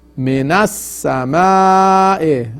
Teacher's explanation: Again the sama'i is madde muttasil, muttasil, and you stretch it at least 4 haraka.